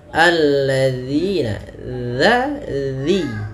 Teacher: Dzal ini harus kita perhatikan karena sering terjadi kesalahan adalah dengan mengganti huruf dzalnya dengan huruf zai